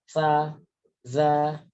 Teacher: punggung lidah itu menempel pada ujung gigi seri bagian atas. Ujungnya, berarti ini gigi seri nih, ujungnya, begitu.